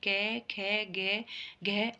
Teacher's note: अब कंठी कंठ से बोले जाते हैं क ख ग घ और अण ये कंठ से बोले जाते